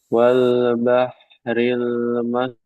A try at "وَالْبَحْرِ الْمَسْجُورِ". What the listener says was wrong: Ya, tebal apa tipis ini? Ya, tebal. haknya sama sin, antum masih belum kelihatan rokhawanya, alirannya. Wal bah, ah, wal bahril masjuro, masjuro.